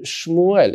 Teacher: it's at the beginning of a word which means that this is a vocal schwa which means that I'm supposed to separate before but there's nothing